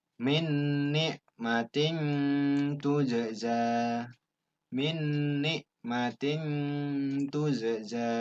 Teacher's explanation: Bunyi N-nya dibaca samar-samar, seakan menyatu dengan huruf yang ditemui berikutnya. · Di sini kasroh tain bertemu dengan ta. Cara membaca berdengung dengan mendekati bunyi N, lalu suara ditahan 2 ketukan. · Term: Ikhfa, ikhfa